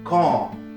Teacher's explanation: le R disparaîtra même s'il n'est pas suivi d'une consonne